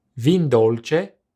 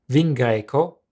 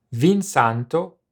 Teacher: In certain cases, the O of vino is dropped with adjectives that begin with a consonant.